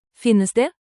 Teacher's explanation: Let your voice rise at the end, keep it friendly and clear.